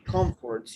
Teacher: You have the stress on the first syllable,